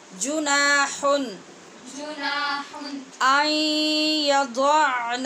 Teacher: یہاں اظہار کیا ہے ہم نے، نون تنوین کے بعد حمزہ حروف حلقی میں سے ہے